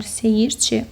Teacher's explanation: Seyirçi sözündə isə tələffüz zamanı i səsi artırılır.